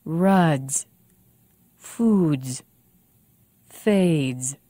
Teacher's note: notice the vowel before the voiced consonant is longer